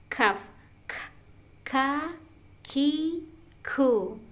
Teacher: kaf itu dia pangkal lidah bagian tengah dan langit mulut bagian tengah ya. Jadi dia udah mau ke tengah.